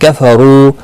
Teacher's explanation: رو پیش کی وجہ سے پر پڑھا جائے گا، واو مدہ بھی ہے، ایک الف کی مقدار کے برابر کھینچ کر پڑھا جائے گا۔